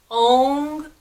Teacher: we're letting the back of the tongue hit the soft upper palate vibrating in the sinus cavities stimulating glands in the brain oh na mo Tong hits the